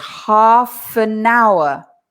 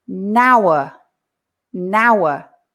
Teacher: We say half an hour. And the N from an pushes to hour and we say nour.